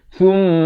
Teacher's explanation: Di sini kita jumpa mim sabdu dibacakan dengan wajibul gunnah. Wajib dengung.